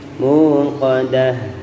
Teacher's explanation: Qadah ini diperjelas, poknya kering, jangan sampai terjerumus ke dalam pelafalan huruf kaf, ya. Muqadah itu otomatis ka yang di-o-kan kalau itu, ya.